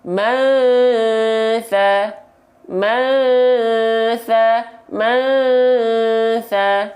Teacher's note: bunyi an-nya kita baca samar dan dengung